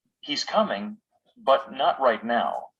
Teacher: The first thought groups have non-final intonation. The voice jumps up on the most important word, but doesn't fall to a low tone.